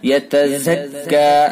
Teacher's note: زا کو سختی سے اور زا کو سیدھا کاف میں ملائیں گے